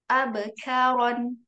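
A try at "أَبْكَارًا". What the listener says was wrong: Jangan ada e-nya. Abe karon.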